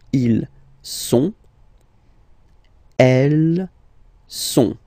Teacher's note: final T not pronounced